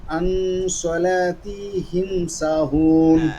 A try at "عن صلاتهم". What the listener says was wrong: عن صلاتهم তিহিম এভাবে টান দেওয়া যাবে না ঠিক আছে